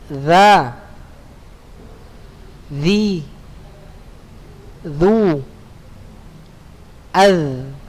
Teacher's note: Taib anak-anak Ustaz, letak huruf dza sama dengan letak huruf dha dan huruf tha. Punggung ujung lidah pada posisi menempel di ujung dua gigi seri atas